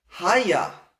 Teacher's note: Even when the emphasis moves back to the first syllable, this a in the root haya never ever drops.